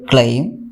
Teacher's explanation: there is a oval sound after l and before m so there is a small change from a to e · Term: diphthong